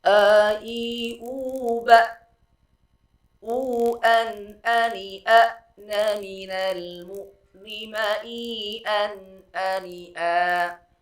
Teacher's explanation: sifatnya adalah sifat syiddah, harus tertahan, aliran suara tidak mengalir, maka harus tegas di dalam pengucapan huruf hamzah